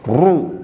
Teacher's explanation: bunyinya tidak seperti huruf R normal yang memiliki banyak getaran